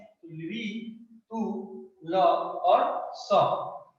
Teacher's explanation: ल, स का उच्चारण स्थान जो है दंत है